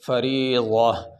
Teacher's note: یہ گول تا پہ اگر وقف کریں تو پھر گول تا پہ وقف کرنے کی صورت میں تا کو ہا پڑھا جاتا ہے، یہ جو ہا نا، یہ اگر اس تا گول تا پہ وقف کرتے ہیں تو اس کو ہا پڑھیں گے۔